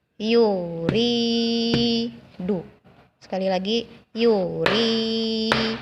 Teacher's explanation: Yang mana yang dibaca panjang? Ada huruf ya mati. Sebelumnya huruf ro berharakat kasrah. Yang dibaca panjang adalah ri-nya. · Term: mad